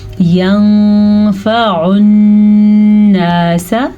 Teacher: नून पे शद आ गई तो फिर नून पे फिर से गुन्ना हो रहा है।